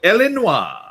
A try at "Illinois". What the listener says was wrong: Illinois. Illinois. Don't. Don't pronounce the S.